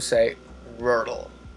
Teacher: Rural have two syllables and the stress is in the first one. Now you need to put your tongue blade in the soft blade to pronounce the R sound.